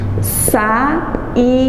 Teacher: Não tem semivogal, porque justamente por ser duas vogais de sons fortes, mais intensos, elas não vão poder ficar na mesma sílaba. Elas vão ter que ficar em sílabas separadas. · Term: hiato